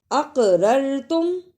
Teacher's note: اقررتم، اسے اقررتم نہیں پڑھنا، قاف جزم کی صورت میں حرف قلقلہ ہے، اس لیے اس کو ہلا کر پڑھنا ہے